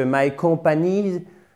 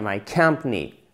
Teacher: My company, bam, tatam, ok? Il faut vraiment taper sur la première syllabe, littéralement. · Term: accent tonique